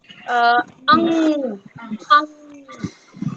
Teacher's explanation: Hum with the back of the tongue. जो हमारी tongue का जो सबसे पिछला वाला हिस्सा है ना, last part, against the soft palate.